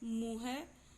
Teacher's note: ये चंद्रबिंदु जो होता है ये इसका उच्चारण नाक और मुंह दोनों से होता है, और जो केवल बिंदी जहां पे होती है उस वर्ण का उच्चारण नाक से होता है।